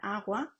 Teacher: fricativo velar sonoro, como en agua